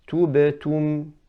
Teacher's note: I'm rounding my lips throughout the whole word, but I should be doing rounding the lips on the dhamma, then going back to the harf sakin, tu, tubetum, and then going back for the meme as well, not tum, tubetum.